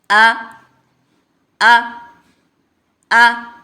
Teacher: यानी गले का जो तीसरा हिस्सा सीने की तरफ है उससे हमजा अदा होता है। आ अ आ याद रखें जब भी अलिफ के ऊपर ज़बर ज़ेर पेश कोई भी हरकत आ जाए तो उसको अलिफ नहीं पढ़ना हमजा पढ़ना है। · حمزہ کو بغیر کھینچے سینے کی طرف نچلے حصے سے ادا کریں گے، یعنی گلے کا جو تیسرا حصہ سینے کی طرف ہے اس سے حمزہ ادا ہوتا ہے۔ آ آ آ یاد رکھیں، جب بھی الف کے اوپر زبر، زیر، پیش کوئی بھی حرکت آ جائے تو اس کو الف نہیں پڑھنا، حمزہ پڑھنا ہے۔